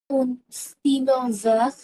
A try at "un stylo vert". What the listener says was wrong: un না, এটা আ, একটা un, একটা আ, হ্যাঁ, দুটো letters একটা আ হবে। আ stylo